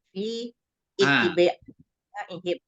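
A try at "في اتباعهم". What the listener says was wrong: pittiba'i apa? Pittiba'i. Bisa membacanya langsung bukan pi tapi langsung pittiba'i.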